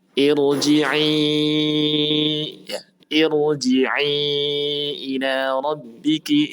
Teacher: Maka ini harus dibaca dengan tafkhim atau tebal.